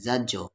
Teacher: जीम साकिन है तो कलकला होगा। रूफ़े कलकला 5 है, काफ ता बा जीम दाल, अगर उन पर जज़म हो तो कलकला होगा।